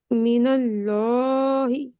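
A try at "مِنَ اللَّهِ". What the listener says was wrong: Okay, ये आ गया हमारा मिनल लॉहि। लाम। ये लाम, अल्लाह के नाम को भी दो हरकत खींचते हैं ना, मिनल लाही नहीं बोलते, मिनल लॉहि दो हरकत खींचते हैं।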